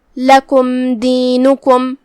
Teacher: ہم یہاں میم کو ظاہر کریں گے اور بغیر کوئی غنہ کے حکم کو ادا کریں گے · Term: اظہار شفوی